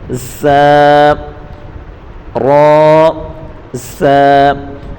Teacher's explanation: سا، سا کو تیزی کے ساتھ پڑھیں گے، صفیری حروف میں سے ہے، تیز آواز سے پڑھیں گے، یعنی سیٹی والا آواز آئے گا